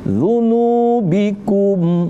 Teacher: Kita panjangin dikit huruf nunya karena ada huruf waw sukun atau waw mati.